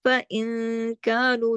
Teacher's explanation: نون ساکن کے بعد کاف آیا، اس لیے یہاں پہ اخفا ہو رہا ہے حقیقی